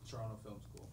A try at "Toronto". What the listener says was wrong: And you can sound educated when speaking to Canadians. Don't pronounce the second T. It's Toronto.